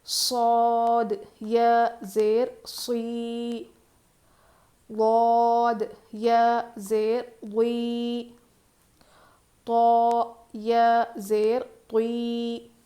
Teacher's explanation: صاد، ضاد، طا، خا، یہ سارے حروف مستعلیہ ہے، ان کو ہم ہیوی پڑھتے ہیں، موٹا پڑھتے ہیں